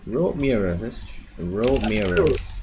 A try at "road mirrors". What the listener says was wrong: Yeah, that's better.